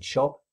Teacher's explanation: if it occurs at the end of a syllable, like in shop, again there'll be no aspiration. In fact, with words like shop, although I might open my lips, it's perfectly acceptable not to even open one's lips at the end. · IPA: /p/